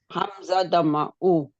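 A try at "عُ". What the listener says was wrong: Hamza. It's no Hamza. It's Ain.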